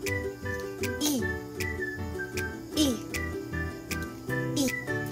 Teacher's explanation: Ang I ay isang di pabilog na patinig na paharap. Ito ay binibigkas sa paraang I.